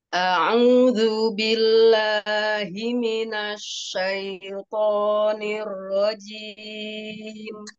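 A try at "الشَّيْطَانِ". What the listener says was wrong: Ya sukun itu jangan terlalu lama ditahan, dia itu hanya gini. Ai syaithan. Ya, jadi waktu ya sukun tidak terlalu banyak menahan seperti gini. Syai gitu ya, syai gitu ya, cukup ai. Syai ai saja. Ya sukun itu kan ai.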